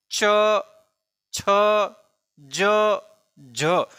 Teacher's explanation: स्पर्श के साथ साथ इनका उच्चारण जो होता है घर्षण के साथ होता है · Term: स्पर्श संघर्षी वर्ण